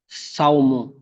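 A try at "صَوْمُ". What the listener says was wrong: সাউ নই, সৌ। সদ অক্ষরটি মুখ গোল করে পড়তে হয়। সৌ মু।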